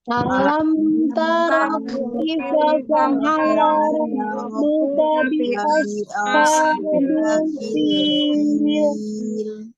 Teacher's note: Lagi hati-hati itu ada huruf shod ya. Shod tebal ya, ada sifat as-safir, desis. Tapi a-nya tidak ditebalkan.